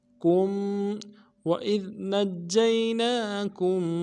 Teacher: نون کو جیم کے ساتھ ملانا ہے، جیم کے اوپر تشدید زور دیں گے، اور جیم کو یا کے ساتھ ملانا ہے، یا لین ہے، بغیر کھینچے پڑیں گے.